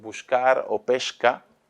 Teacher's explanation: Está generalizada la palatalización de la S delante de la velar K